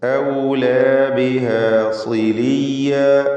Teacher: സ്വാദിന് കസ്റാണ്, കുറഞ്ഞ തഫ്ഖീം കൊടുക്കുക